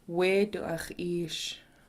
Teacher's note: It ends with this rounded du sound.